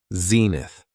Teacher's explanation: it has two syllables and the stress is on the first syllable